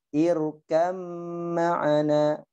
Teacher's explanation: ba sama ma, dia satu makhraj di kedua bibir.